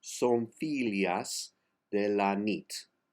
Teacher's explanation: The accent on fi, so the E is an A.